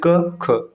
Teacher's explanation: इनके उच्चारण में स्वर यंत्र में कंपन नहीं होता है किसी भी वर्ग का पहला और दूसरा अक्षर जैसे क ख · क ख स्वर यंत्र में कोई भी कंपन नहीं होगा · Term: अघोष व्यंजन